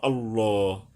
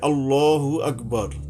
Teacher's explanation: যখন আমরা থেমে যাব তখন আর পেশে উচ্চারণটা হবে না